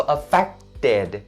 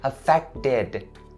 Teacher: The ed part in this word is going to be pronounced as id.